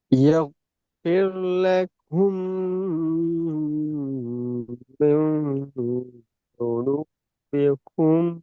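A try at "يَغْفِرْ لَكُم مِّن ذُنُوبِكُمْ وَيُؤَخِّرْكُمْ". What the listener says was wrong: துனுபியக்கும் தான் வருது, தெளிவா வருது, துனுபியக்கும் தான் வருது. யஃபிர்லக்கும்ல வந்த அந்த சவுண்ட் துனுபிக்கும்ல வரல. அப்போ உங்களோட உங்களோட உங்களோட மிஸ்டேக் விளங்காது உங்களுக்கு. ஏன்னால் நீங்களோட ஓதலை நீங்கள் காதில் கேட்டால் தான் அந்த வித்தியாசம் விளங்கும்.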